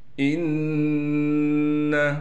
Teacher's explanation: نون پر تشدید ہونے کی وجہ سے غنہ کیا جائے گا